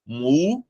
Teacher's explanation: O acento, ele está na antepenúltima sílaba. Essa sílaba é a sílaba tônica. Então, aqui, a palavra música, ela é proparoxítona.